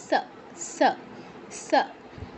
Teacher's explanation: উপরের পাটির দাঁতে স্পর্শ করবে জিহ্বা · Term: দন্ত স